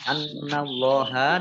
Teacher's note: nun tasdid dibaca gunnah atau mendengung, ditahan 2 harokat. Allahnya dibaca tebal karena harokat di depannya fathah.